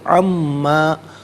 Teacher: نون ساکن کے بعد میم ہے تو یہاں پر بھی یرملون کا جو قاعدہ اپلائی ہوگا میم کی آواز کو غننے کے ساتھ ادا کریں گے.